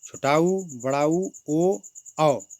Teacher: जिस स्वर के उच्चारण में हमारे होठ जो गोलाकार स्थिति में हो जाते हैं उसे वृत्तमुखी स्वर कहते हैं।